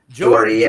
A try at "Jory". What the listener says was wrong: Jory. Jory. Corey with a J. Nope. No D. There's none.